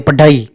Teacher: ढ जीभ ऊपर जाके तुरंत वापस नीचे की ओर आती है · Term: उत्क्षिप्त वर्ण